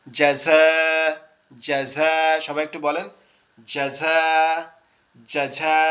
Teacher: জাযা, এই দেখেন এখানে উচ্চারণ সুন্দর করার জন্য আগে অক্ষরের বুঝতে হবে, জিমটা শক্ত আওয়াজ হবে দাঁতের পাটি একসাথে চেপে, তারপরে ঝাটা হবে জিহ্বার আগা নিচের দাঁত থেকে।